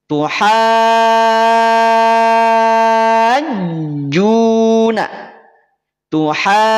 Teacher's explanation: Berarti cara bacanya, panjangkan dulu 6 harokat. Itu. Baru ditekan pada huruf jim. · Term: mad lazim musaqal kilmi